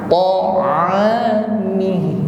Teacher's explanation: ain keluar dari makhraj wasatul halqi, tenggorokan bagian tengah.